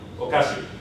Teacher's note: I start low, I'm high, and then I hit the accent right away, so I drop.